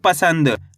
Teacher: इसे अनुस्वार की मात्रा बोल के पढ़ना है। किसकी मात्रा? अनुस्वार की मात्रा। क्योंकि इसका उच्चारण नाक से निकलता है।